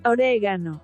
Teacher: Just as with the pronunciation favored by Americans, Spanish speakers also place the stress on the second syllable, resulting in oregano.